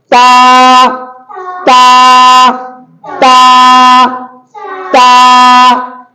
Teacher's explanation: ता का मखरज क्या बताया? जबान की नोक और सनाया ओलिया की जड़, नोक और जड़, नोक और जड़।